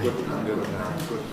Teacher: It starts raised for [gʊd]. Then it has to come down for the [n]. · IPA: [ˌgʊd ˈnaɪt]